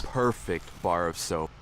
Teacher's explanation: so there's our s it's a strong long s